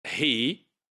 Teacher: In he, the vowel E, that's a high vowel.